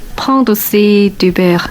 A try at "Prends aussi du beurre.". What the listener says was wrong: Prends aussi, il n'y a pas de liaison.